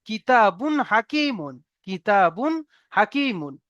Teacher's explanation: এখানে বা পেশ বুন আমরা গুণনা করবো না কিতাবুন এমনভাবে গুণনা করব না